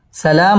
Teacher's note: সালাম মধ্যে তাবাই এক আলিফ টেনে পড়তে হবে সালামুন ইজহার গুন্না ছাড়া স্পষ্ট করে পড়তে হবে সালামুন হিয়া হাত্তা